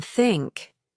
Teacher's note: keep the tongue just between your teeth and allow the air to pass out without vocal cord vibration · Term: voiceless